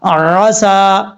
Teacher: عین کو حمزہ کے مخرج سے بچانا ہے